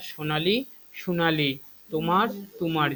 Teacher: কামরূপীতে ও কখনো কখনো উ রূপে উচ্চারিত হয়, ও কখনো কখনো উ রূপে উচ্চারিত হয়, অর্থাৎ সোনালী, সোনালী, তোমার, তোমার, যেখানে ওকারগুলো রয়েছে সেটা উকারে পরিণত হয়ে থাকে।